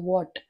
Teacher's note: तुम्हाला वॉट म्हणताना ओठांचा ओ करायचा असतो